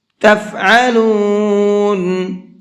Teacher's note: عین کو حلق سے نکال کر کے پڑھیں گے